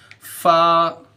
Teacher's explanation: फ़ा, देखो फ़ा कहाँ से निकलता, ऊपर के दांत को नीचे के होठ में